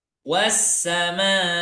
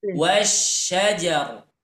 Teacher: Yang pertama ada desisnya, yang kedua tidak ada desisnya, ada dikit.